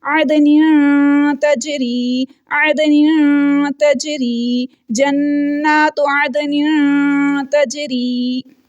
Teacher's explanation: तनवीन की आवाज़ को नाक में छुपा रहे हैं, इख्फा कर रहे हैं।